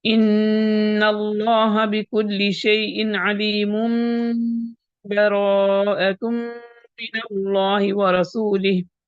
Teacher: تو ہم غنہ کرتے ہوئے 2 حرکات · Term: اقلاب